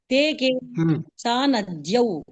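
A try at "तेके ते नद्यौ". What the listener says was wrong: ఇందాక మీరు సా అన్నారు,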